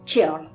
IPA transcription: tʃɛɔrl